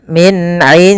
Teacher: jelaskan suara Nun ketika ia bertemu dengan huruf Ain Maka jangan disampai didengungkan